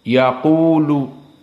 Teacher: Wau di sini Sakinah maka dia menjadi Mad thi'i